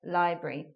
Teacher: how we're turning a otherwise 3-syllable word into a 2-syllable word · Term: elision